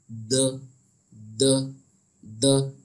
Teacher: और इसका जो मखरज है वो ता का मखरज और दाल का मखरज, ये दोनों का मखरज जो है वो सेम है, यानी जबान की नोक और ऊपर के दांतों की जड़ से ये अदा किया जाता है